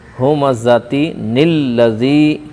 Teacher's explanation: تا کے نیچے دو زیر تنوین ہے، دو زیر تنوین کو لام سے ملا کر پڑھیں گے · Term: نون قطنی